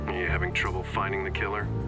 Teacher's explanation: It was a distinctive pattern, a rising falling type of intonation pattern.